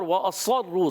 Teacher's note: پھر اظہار شفیع کا قاعدہ، وَأَصَرُّوا، حرکات کو بغیر کھینچے ادا کریں گے، واو کے ادائیگی ہونٹوں کی گولائی سے کریں گے، اور وَأَصَرُّوا، صاد موٹا عرف مستعلیہ میں، عرف مطبقہ میں